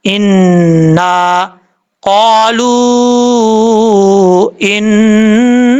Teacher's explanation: نون کے اوپر شد ہے، غنہ کریں گے ایک الف کی مقدار، الف ہے اس کو ایک الف کی مقدار لمبا کر کے پڑھیں گے۔